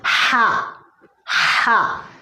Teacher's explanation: दरमियानी हलक से हा अदा होता है।